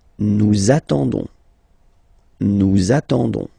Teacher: But then nous is coming here, all right, and then we've got the classic ending for nous, so ons, okay, you don't pronounce the s, so you get only this on sound, okay. Attendons, nous attendons, so we'll make the link between the two, la liaison.